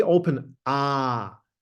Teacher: We have to pay attention to all vowels in German because we have to pronounce them quite clearly this is a really open ah